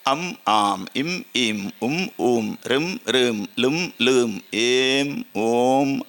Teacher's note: ಮಕಾರ ಅಂದರೆ ಅದರ ಅರ್ಧ ಅದನ್ನು ಖಾಲಿ ಉಚ್ಚಾರಿಸಲಿಕ್ಕೆ ಆಗುದಿಲ್ಲ ಮೂಗಿನಿಂದ ಉಚ್ಚರಿಸಬೇಕು ಆವಾಗ ಅದನ್ನು ಹೇಗೆ ಉಚ್ಚರಿಸಬೇಕು ಹೇಳಿದರೆ ಸ್ವರದ ಸಹಾಯದಿಂದ ಉಚ್ಚಾರಿಸಬೇಕು ಅಥವಾ ಸ್ವರ ಸಹಿತವಾದ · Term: ಅನುಸ್ವಾರ